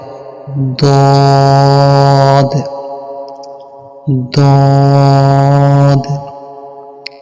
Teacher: জিহ্বার গোড়ার যেকোনো একদিকের কিনারা উপরের মাড়ির দাঁতের ঘোড়ার সঙ্গে লাগাইয়া উচ্চারিত হয়